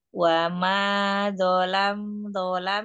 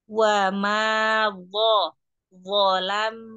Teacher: Jangan hanya sekedar zalam, tapi angkat pangkal lidahnya.